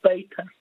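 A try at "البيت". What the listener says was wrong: No. Not this ba. Ba is not really a full mouth letter.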